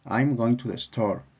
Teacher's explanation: la entonación descendente es predominante a lo largo de la oración